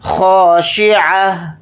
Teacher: اور اگر یہاں پر ہم آیت نہیں کرتے ہیں، سانس نہیں توڑتے ہیں تو پھر تا پڑھا جائے گا اور تا کے اوپر دو پیش لگا کر پڑھیں گے۔ حالت وقف میں تا کو ہا ساکن بنا کر پڑھیں گے، اس میں ہا کی آواز اس طرح سے آئے گی سانس توڑتے ہوئے